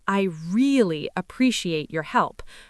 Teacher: The word really intensifies the message, but only if you stress it properly.